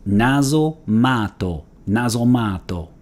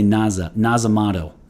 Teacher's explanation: if there is an a before a geminate consonant so that'd be two t's in this case right a repeated consonant like tt like we have here then the a is lengthened